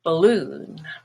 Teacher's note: in the word balloon the stress is on loon